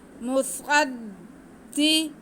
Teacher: وآمنوا بما أنزلت مصدقا لما معكم، میم پہ پیش، صاد پہ زبر، صاد حروف مستعلیہ ہے، اس کو ہم موٹا کر کے پڑھیں گے سیٹی کی آواز کے ساتھ، اور پھر صاد کا زبر ہم دال کے ساتھ ملائیں گے کیونکہ دال کے اوپر شد ہے، صاد کو ہم تھوڑا سا رک کے دال کے ساتھ ملائیں گے۔